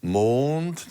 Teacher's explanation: wenn es ein langer Vokal ist - Mond - dann ist die Viertelnote länger